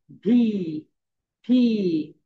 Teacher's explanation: ভি উচ্চারণের সময় উপরের দাঁত নিচের ঠোঁটের সঙ্গে হালকা টাচ করবে।